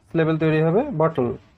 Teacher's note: বটলের ল উচ্চারণটা সেই স্বরবর্ণ লি এর মতো। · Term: সিলেবিক কনসোনেন্ট